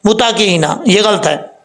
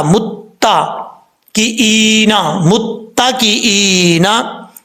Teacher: متقئین یہ غلط ہے. تا کے اوپر شد ہے، جس حرف کے اوپر شد وہ دو دفعہ پڑھا جاتا ہے. میم تا پیش مت، تا زبر تا، متا کی اینا، متا کی اینا.